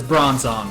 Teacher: The Pokédex 3D Pro says Bronzong with emphasis on the second syllable, and then the anime says Bronzong with emphasis on the first syllable